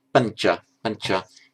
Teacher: Before a palatized consonant, it automatically, you didn't say pancha, it's pancha, because the tongue automatically goes to the same place where the ch comes out. It palatizes itself